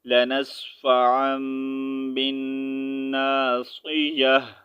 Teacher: یہاں پر تا کے نیچے زیر نہیں ریڈ کریں گے، اس کی تا کا ساؤنڈ جو ہے ہا میں چینج کر دیں گے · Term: ہا کی آواز